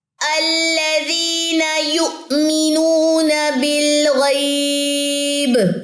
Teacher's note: ایک یہاں پہ میں نے وقف لیا ہے، یہاں پہ اپنی سانس توڑی ہے تو با کی زیر گرے گی اور اس پہ کلکلا آ جائے گا